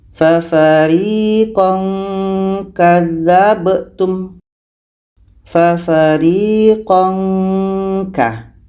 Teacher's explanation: Tanwin bertemu kah. Ikhfa ab'ad menghasilkan bunyi ngah.